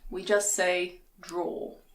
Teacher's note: in british english we don't pronounce the er at the end we just say draw